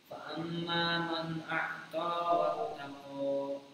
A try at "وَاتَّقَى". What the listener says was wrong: Maknya ditahan dulu. Fa amma man a'ta wattaqa. Huruf ko enggak boleh keluar nafasnya. Ko, a, ko, ko.